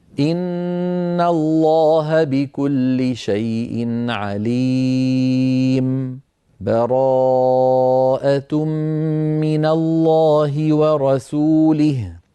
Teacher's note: واحد من هذه الأوجه هو السكت، أن يسكت على آخر الأنفال ثم بسكتة لطيفة ثم يبدأ بالتوبة هكذا: إن الله بكل شيء عليم براءة من الله ورسوله. سكتة لطيفة من غير تنفس